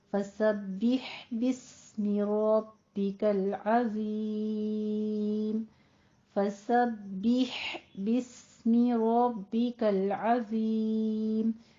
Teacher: बिह वस्ते हलक में चला जाएगा, साकिन कर देना है